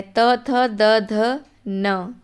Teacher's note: ठीक है, जब आप बोलो, प्रोनाउंस करो, अभी इसी वक्त करो। त बोलो, दांतों से टकरा रही है जीभ। थ बोलो, टकरा रही है, पूरे वर्ग में त वर्ग में टकराएगी।